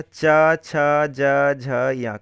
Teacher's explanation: यह जो है उच्चारण कहां से होता है च वर्ग का तो तालू से होता है